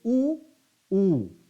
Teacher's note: इनका उच्चारण करते समय दोनों ओठ मिल जाते हैं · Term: ओष्ठ